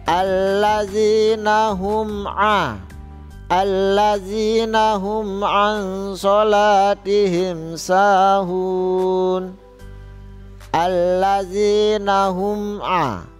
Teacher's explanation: dibaca jelas di bibir mulut tertutup dibaca pendek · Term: izhar syafawi